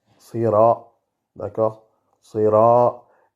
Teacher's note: Le ra, il est prononcé avec la langue. On roule le R, mais il y a uniquement la langue et pas la gorge.